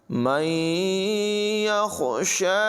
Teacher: ہا کی آواز کو حلق کے نچلے حصے سے ادا کریں گے، شین پر کھڑی حرکت ہے، اسے لمبا کریں گے، اور ہا کو بھی الف مدہ کی وجہ سے لمبا کر کے پڑھیں گے۔